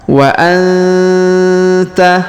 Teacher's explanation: huruf nun sukun bertemu Ta Maka didengungkan dan disamarkan